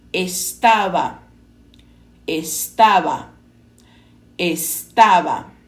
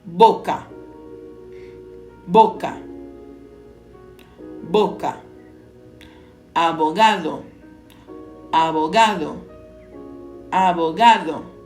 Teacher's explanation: No espanhol, a letra B geralmente é pronunciada com menor pressão labial, parecendo um intermediário entre o V e o B